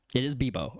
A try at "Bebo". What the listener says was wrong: Bebo. No, Bebo. I heard with a P.